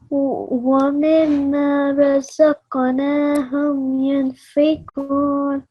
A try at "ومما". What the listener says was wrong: It was I know it's tiring, okay, and when you did it the last time you didn't do the gunna on the meme, okay, but otherwise your reading was very, very nice.